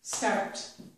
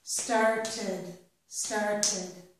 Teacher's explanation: Notice that I get an extra syllable with the ed. When I had the word start, it was one syllable or one beat, start. But when I added ed, I got a second syllable or a second beat